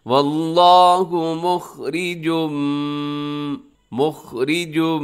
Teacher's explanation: यहाँ इदगाम हो रहा है, गुन्ना भी साथ हो रहा है